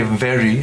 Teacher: you use your upper teeth on your lower lip and say very